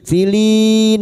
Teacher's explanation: bertemunya mad dengan huruf hidup yang dibaca wakaf mad arid li sukun empat harakat kita panjangkan